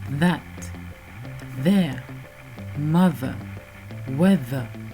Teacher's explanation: La deuxième consonne TH est la version douce, donc les cordes vont vibrer.